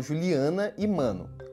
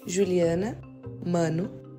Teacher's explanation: muitas vezes o paulistano acaba não nasalizando a vogal A, como faz a maior parte dos brasileiros